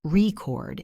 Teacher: If I stress the first syllable, record, it's a noun.